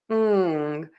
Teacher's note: the tip of your tongue is low in your mouth. Back of the tongue is pulled high up. ng ng Air is moving out of your nose. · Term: N G sound